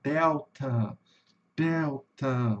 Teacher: Vai ter um, vai ter uma subida e uma caída pro final, né? Por isso que eu representei o som aqui com um com um a com um tio em cima, né? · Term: sílaba tônica